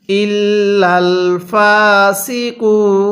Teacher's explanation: ওয়াকফের সময় নুনের উপর জবরকে বাদ দিব।